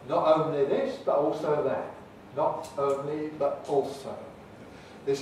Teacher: instead of making it alveolar we can make it glottal and that gives us the gives us the london style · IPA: nɒʔ əʊnli bəʔ ɔːlsəʊ